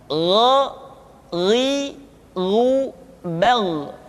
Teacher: Diucapkan seperti kita mengucapkan huruf Kha, yaitu diucapkan dari pangkal tenggorokan kita. Yang membedakannya adalah Kha mengalir nafas dan Gha tidak mengalir nafas. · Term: huruf Gha